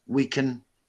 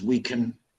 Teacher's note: So the words in that sentence that don't carry meaning, like can, we can, becomes we can. So I'm changing the pronunciation of the word can to kun. This is called a weak form, okay? And it only happens with words that don't carry meaning.